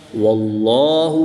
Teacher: جلالت اللہ عز و جل کے لام سے پہلے واو پر زبر ہے اس لیے اس لام کو پر یعنی موٹا پڑھیں گے